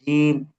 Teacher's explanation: জিহ্বার মধ্যখান, তারপর আবার উপরে তালুর সঙ্গে লাগে